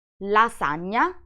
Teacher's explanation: it's a nasal sound and to reproduce it you need to put your tongue on the palate